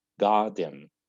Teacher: But in garden, we have R, then D. D is a consonant, not a vowel. So I don't pronounce R here, and I say garden.